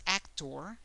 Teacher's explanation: in English is actor the emphasis is more in the first syllable actor but in Spanish the emphasis is in the last syllable